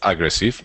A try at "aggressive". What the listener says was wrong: Aggressive, yeah. But when you say that word, can you say no stress at the beginning? Aggressive.